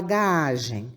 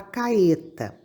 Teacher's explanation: Nesse tipo de rotacismo, o fonema R é omitido devido à dificuldade de pronunciá-lo. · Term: rotacismo por padrão